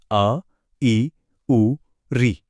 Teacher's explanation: पहले हैं लघु स्वर। इनके उच्चारण में सिर्फ एक मात्रा का यानी बहुत कम समय लगता है।